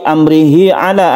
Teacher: ada hak dhamir yang panjang yang diapit oleh 2 huruf hidup, maka dia dibaca panjang 1 alif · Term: mat silah qasira